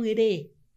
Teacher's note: Você eleva, você afina a língua, você vibra, é a ponta da língua. Se a sua língua tá pesada, molinha no chão da boca, você não fala o re.